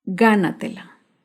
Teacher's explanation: Gánatela se acentúa en la sílaba anterior a la antepenúltima sílaba. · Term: palabras sobreesdrújulas